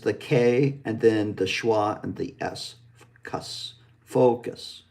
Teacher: the second syllable is the K, and then the schwa and the S, cuss, focus.